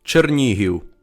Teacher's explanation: the Ukrainian name has the stress accent so we know that the second syllable is stressed in this word